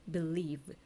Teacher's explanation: 9번은 believe. v는 우리 유성음에 해당하죠